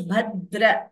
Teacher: If you can notice, Bhadra, D is doubling.